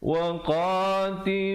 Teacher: Qa dua harakat, lu dua harakat, dan hum sempurnakan saja mim matinya. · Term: izhar syafawi